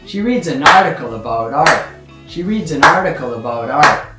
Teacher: Quite rapid words at the beginning. And the first strong stress is article. The second strong stress is art.